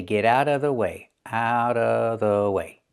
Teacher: Get out of out of the T in out changes to a fast e because it's between vowels. And what about the vv sound in of? Well, you don't have to make that sound. And most people don't.